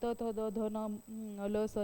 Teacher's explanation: जे वर्ण उच्चारताना आपल्या जिभेच्या टोक वरच्या दताच्या मागच्या बाजूस टेकते त्याला दंत वर्ण असं म्हणतात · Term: दंत्यवर्ण